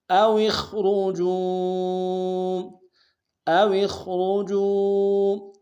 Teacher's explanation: خواہ کو موٹا ادا کریں گے، واو کو موٹا ادا کریں گے